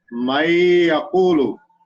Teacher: Then ya comes, so we have to read with gunna, and we have to enter this nun into the next letter, into ya, and then we have to read with gunna of one alif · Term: idgham with gunna